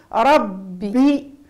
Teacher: ربي ربي ورد بالك من بي لأنه الباء تخرج الصوت لابد يركز في وسط الشفتين. ربي كي توزع الصوت على كامل الشفتين باش تجي بي.